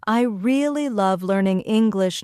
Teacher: Notice how really and English are emphasized. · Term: stressed and unstressed words